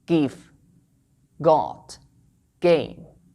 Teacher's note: the sound gay, doesn't exist in standard Arabic, but you can find this in Egyptian or Iraqi Arabic